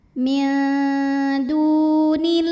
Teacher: Karena ada waw sukun sebelumnya baris dhammah, maka huruf dal kita panjangkan 2 harokat. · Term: mad tabi'i zahiri